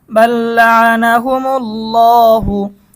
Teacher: এখানে আমরা আল্লাহ শব্দের লামকে মোটা করব